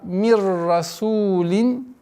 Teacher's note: Идгам биля гунна. Ассимиляция без назализации. С удвоением ра.